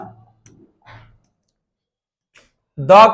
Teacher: द से दांत होता है ठीक है तो दांत हो जाएगा द का उच्चारण स्थान जो है दांत हो जाएगा